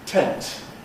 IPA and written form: tent (tent)